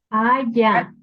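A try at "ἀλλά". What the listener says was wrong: L, hermana, es L. lambda, es ala,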